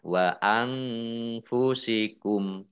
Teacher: Nun sukun bertemu dengan huruf fa, bacaan ikhfa, dibaca samar-samar. Kemudian kumnya dibaca wakof atau berhenti dan dibaca pendek, tidak ada tanda panjangnya.